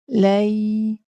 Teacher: Di sini bukan berlaku pemanjangan, tetapi kita kedengar seperti panjang sebab kita nak menghargai sifat rokhawah pada huruf ya. Seperti mana kita maklum, huruf ya adalah sifatnya rokhawah. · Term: huruf lin